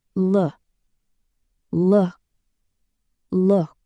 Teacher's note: It's a short, relaxed sound. Keep your lips slightly rounded and don't exaggerate the vowel.